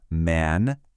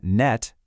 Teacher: First up, we have the nasals, and they're called that because, for these three sounds, the air actually comes out of your nose instead of your mouth.